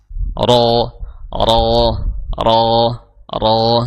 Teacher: Tapi ro itu makhrajnya bukan di kedua bibir. Ya, makhrajnya adalah di ujung lidah bertemu dengan gusi gigi seri atas